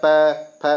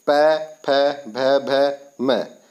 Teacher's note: पै, फै ओठों से बोले जा रहे हैं इनकी ध्वनि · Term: ओष्ठ से उच्चारित वर्ण